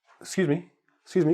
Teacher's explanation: sometimes we even drop the initial vowel